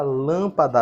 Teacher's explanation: na palavra lâmpada a sílaba tônica é lã